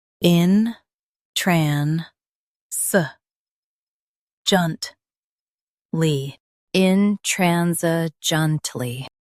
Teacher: Stress tran, keep s soft, and say junt smoothly. In, tran, s, junt, intransigently.